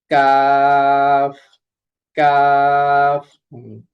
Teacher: জিহ্বার গোড়া থেকে একটু আগে বাড়িয়ে তার বরাবর উপরে তালুর সঙ্গে লাগিয়ে উচ্চারিত হয় কাফ